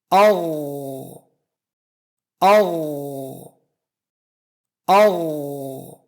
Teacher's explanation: حرف غین کو ادا کرنے کے لیے حلق پر تھوڑا دباؤ ڈالنا ہوتا ہے اور اس کی آواز گاڑھی اور موٹی ہوتی ہے، جبکہ جی اور گ آسانی سے ادا ہوتا ہے اور اس کی آواز غین کی آواز سے نرم اور پتلی ہوتی ہے۔